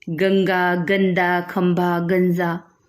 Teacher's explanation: ये नासिकीय ध्वनियां स्वर के उच्चारण के बाद आती हैं, जैसे गंगा। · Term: अनुस्वार